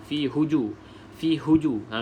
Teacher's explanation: pastikan huruf ha disebut dengan angin bunyi angin